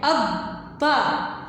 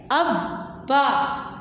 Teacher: اب ہم اب با نہیں پڑھیں گے، یہ چونکہ ایک حرف کو 2 بار ہم پڑھ رہے ہیں تو دونوں کو ہم مکس کر دیں گے۔ ہم ان دونوں کو تھوڑا سا دباؤ کے ساتھ تشدید کو پڑھتے ہیں، اس پر تھوڑا سا ایک لمحہ کے لیے ہم رک کر پھر پڑھتے ہیں